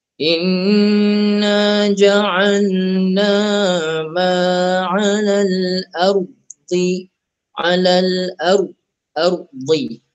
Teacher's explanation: ra dibaca tebal. Ra dibaca tebal. Muncungkan sikit mulut.